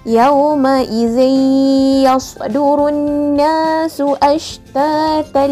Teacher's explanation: memasukkan bunyi tanwin ke dalam huruf ya beserta dengun dengan kadar 2 harakat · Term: idgham ma'al ghunnah